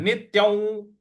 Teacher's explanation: नित्यं नी के बाद जो आधा त है उस पर आघात देना है, और य के ऊपर जो अनुस्वार है उसका उच्चारण हमें व इस प्रकार से लेना है।